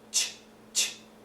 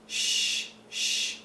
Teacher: the tongue is is lower there's no stoppage